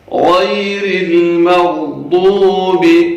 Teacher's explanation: غیر المغضوب، غین ہے، اس کو بھی موٹا کر کے پڑھنا ہے. غین بھی ان حروف میں سے ہے جنہیں پر پڑھا جاتا ہے، یعنی موٹا کر کے پڑھا جاتا ہے